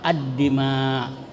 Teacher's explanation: lamnya tidak dibaca terang tapi dibaca ee masuk ke huruf sesudah lam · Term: idgham samsiyah